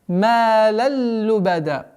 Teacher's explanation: Уходим на ассимиляцию без назализации. Идгам биля гунна.